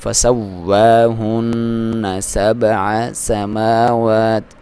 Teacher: یہاں پہ واو پہ ایک تو شد ہے تو دبا کے پڑھیں گے، پھر اس پہ کھڑی زبر ہے تو آپ نے ایک الف کی برابر لمبائی فسوا، ٹھیک ہے، ہونٹوں کی گولائی کے ساتھ فسواہن. نون پہ آپ نے ایک تو غنہ کرنا ہے، دوسرا دبانا ہے، فسواہن 7 سماوات، کیونکہ اس پہ شد بھی ہے.